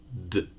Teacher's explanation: another possible pronunciation is the voiced alveolar plosive